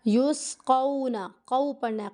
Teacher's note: کو کی آواز نہیں آنی چاہیے کیونکہ حروف لین ہے، حروف لین کو ہمیں نرمی کے ساتھ ادا کرنا ہوتا ہے، نون کو نہیں کھینچنا۔